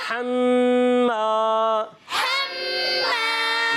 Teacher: حا میم زبر حم, حمیم زبر حم. میم مشدد میں ایک الف کا غنہ بھی کرنا ہے. میم الف زبر ما, میم الف زبر ما.